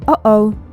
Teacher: 미드나 영드에서 뭔가 상황이 잘못 돌아갈 때 oops와 함께 자주 듣는 uh-oh 소리 귀에 익숙하죠? 이때 잘 들어보면 어와 오 사이에 짧은 공백, 바로 뒤에 소리가 급정지되는 구간이 있는데요. uh-oh 라고 말할 때 중간에 뭐간 공기의 흐름이 잠시 멈췄다가 다시 숨을 내쉬는, 즉 성대를 빠르게 닫았다 열어서 내는 소리죠. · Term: 성문 파열